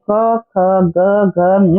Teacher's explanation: क वर्ग के बोलते जाते हैं, गले के अंदर से आवाज आती है